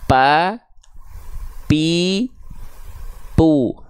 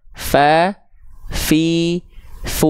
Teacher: bibir bawah pa pi PU ya enggak akan betul karena Fa bukan dari persentuhan antara kedua bibir tapi dari ujung gigi Sari atas disentuhkan dengan bibir bawah bagian dalam yang basahnya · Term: huruf fa